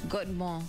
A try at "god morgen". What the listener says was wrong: Like a lot shorter.